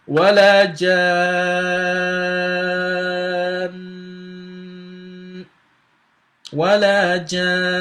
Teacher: So we don't pronounce the tanween, but because it has Shaddah, we have to stop on it for 2 seconds or for 2 beats